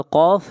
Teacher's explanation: قاف حروف مستعلیہ میں سے ہے، قاف کو موٹا پڑھا جائے گا۔